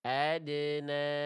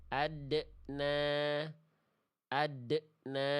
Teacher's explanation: Adna, adna. Ya, bunyi dal sukunnya ada pantulan di ujung pelafalannya kayak ketahan